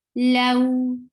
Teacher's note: Give fatha first, low, and give oo sound at the last sound. Low, la, 2 counts long.